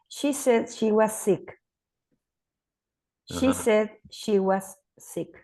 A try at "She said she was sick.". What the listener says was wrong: I think you need to say the was a bit stronger. Say it again. She was sick is the second one, right? Was sick, right?